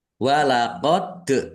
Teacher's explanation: dal sukun bacaan qalqalah ya dibaca memantul ditampakkan pantulannya